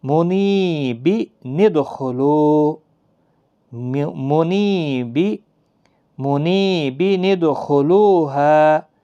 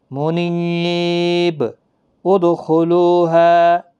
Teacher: نون قطنی کو ہمیشہ زیر کے ساتھ پڑھا جاتا ہے